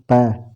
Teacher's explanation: प तो होठ से बोला जाता है